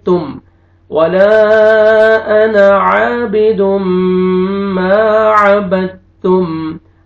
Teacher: با کو آپ نے تا کے ساتھ ملانا ہے اور میم پہ اخفا نہیں کریں گے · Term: ادغام